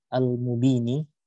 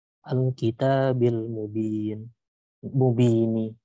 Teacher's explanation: Lalu disambung dengan huruf nun berharokat kasrah. Jadi dipanjangkan bacaan ba-nya sepanjang dua harokat. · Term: matobi'i